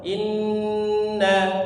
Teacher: gunnah musyaddad, gunnah yang dikeraskan, sangat keras. Jadi dipanjangkan seperti itu.